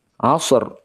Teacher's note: rnya dibaca tebal karena harakat yang ada sebelumnya dari huruf Ain adalah fathah